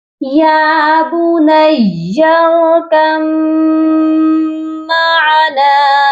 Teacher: میم مشدد ہے اس وجہ سے یہاں غنہ بھی کیا جائے گا